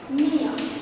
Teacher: তাহলে দেখো উচ্চারণে কিন্তু ইয়, এই ব্যঞ্জন বর্ণটার আলাদা করে আর কিন্তু কোনো ধ্বনি নেই